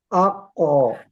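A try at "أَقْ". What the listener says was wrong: Jangan lama. Aku. Itu seperti tasdid. Tapi sukun langsung. Aku. Langsung mantul. Aku.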